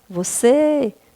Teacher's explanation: você é oxítona, a sílaba tônica é a última